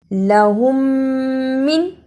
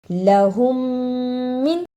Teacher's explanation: ادا کرنے کا طریقہ میم ساکن کی آواز کو تھوڑی دیر منہ میں چھپا کر غنہ کرنا ہے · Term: ادغام شفوی